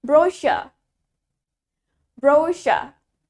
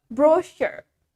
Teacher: The stress is in the second syllable.